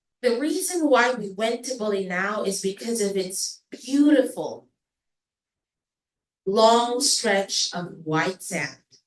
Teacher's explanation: Hindi siya yung flat lang yung tone. Naglalagay ako ng stress sa words such as beautiful.